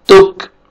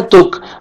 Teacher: ता को बारीक पढ़ेंगे, काफ का भी लाइट से साउंड आएगा